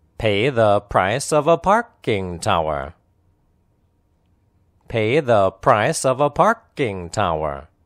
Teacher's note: pay and price are clearly pronounced the and of are unstressed